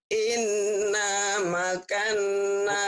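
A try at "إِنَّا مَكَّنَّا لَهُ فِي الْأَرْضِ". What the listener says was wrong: Bukan. Bukan makan. Ada tasjidnya. Tasjid disentak. Sambar.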